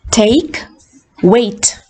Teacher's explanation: So the tongue moves from the first vowel to the second vowel. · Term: diphthong